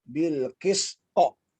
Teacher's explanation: jadi qalqalahnya itu berbunyi ujungnya hamzah